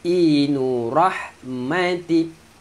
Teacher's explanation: ha pedas, ha rah dekat tengah kerongkong